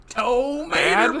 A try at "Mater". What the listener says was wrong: Yeah, like mater without the tuh.